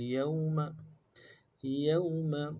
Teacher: या को वाव के साथ मिलाना है, वाव लीन है, बगैर खींचे पढ़ेंगे, नून को नून से अदा करेंगे।